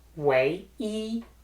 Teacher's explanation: when E is at the end of the compound word like way E, it stays in the first tone and doesn't need any changes